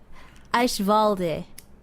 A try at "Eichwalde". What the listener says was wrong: You're not pronouncing your E's at the end. Yeah, that's close to you saying green in Spanish. De. Eichwalde.